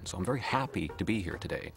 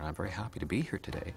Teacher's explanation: Canadians tend to end each sentence by moving their tone of voice slightly upward, unlike Americans. · most Americans, they go up early in the sentence, stress-wise, and then they come down hard at the end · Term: gentle drifting up pattern, American pattern